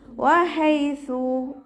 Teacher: ഹ സൗണ്ടിനെ clear ആക്കിയിട്ട് തന്നെ ഉച്ചരിക്കുക. മഹ്റജ് വരുന്നത് നമ്മുടെ തൊണ്ടയുടെ മധ്യഭാഗമാണ്. ഹ എന്നുള്ള സൗണ്ട് തന്നെ കൊടുക്കുക കേട്ടോ. · വാവ് ഉച്ചരിക്കുന്ന സമയത്ത് ചുണ്ടുകളെ വട്ടത്തിൽ പിടിച്ചു കൊടുക്കുക